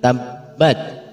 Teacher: Di ayat pertama ada tabbat, dan dilihat di situ ada ba bertasydid sehingga ba-nya harus kita tekan